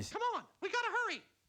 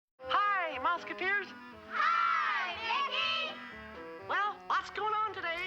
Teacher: the smoking dried out the vocal cords which lowered the pitch